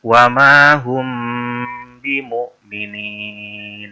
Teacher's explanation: disertai dengan suara mendengung dengan kata lain sewaktu mendengungkan mim sukun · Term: Ikhfa Syafawi